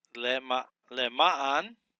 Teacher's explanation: The accent is on the second syllable.